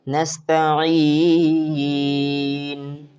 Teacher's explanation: अब नस्तईनु से नस्तईन बना। एक तो हमने नून में हालत को बदल दिया कि पेश को ख़त्म करके साकिन कर दिया वक़फ़ की वजह से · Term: मद्दे लीन आरिज़ वक़फ़ी